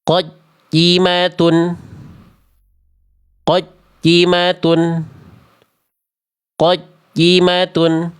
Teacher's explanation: Karena ya-nya tidak ada rokhawahnya, tidak ada mengalir suaranya. Ya-nya terputus